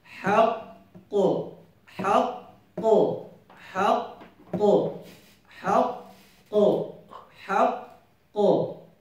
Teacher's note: we have two qaf. So you get the first one, then you make qalqala for the second one like this. Haqqo, haqqo, haqqo, haqqo, haqqo.